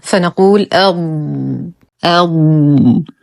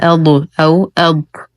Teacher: نقف على الضاد بالاستطالة